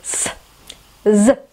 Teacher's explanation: с и з у нас на верхних альвеолах располагается, да, за верхними зубками.